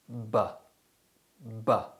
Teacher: This sound is produced by building up air pressure behind the lips and releasing it explosively, while simultaneously producing a sound from the back of the throat. This gives the sound its technical name, the voiced bilabial plosive. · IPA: /b/